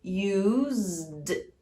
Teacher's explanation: a palavra use termina com o som Z, que é um som voiced. Então, você vai adicionar o som do D.